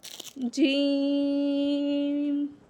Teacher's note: इसको जो है जुबान का दरमियान और उसके मुकाबल तालू के मेलाब से होता है। यानी जुबान का वस्त वस्त से मुराद दरमियान। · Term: जीम